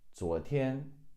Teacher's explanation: 昨 is second tone, 天, first tone